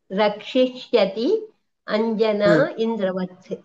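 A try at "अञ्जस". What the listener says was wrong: Correct. అంజస, అంజనా కాదు, అంజస.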